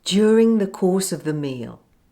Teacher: the s in course links to the weak vowel sound uh in the word of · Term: catenation